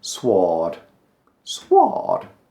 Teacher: There's a W in there somewhere. Sword, sword. But we don't pronounce that.